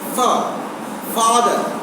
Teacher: But in English, fa is lower lip and upper teeth. Fa sound is produced by lower lip, upper teeth.